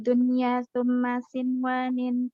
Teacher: Cara bacanya dibaca jelas nun sukunnya seperti izhar halki, panjangnya 1 harokat.